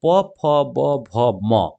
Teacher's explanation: यानी ओष्ठ से उच्चारण होने वाला क्या है, एक तो प वर्ग हो जाएगा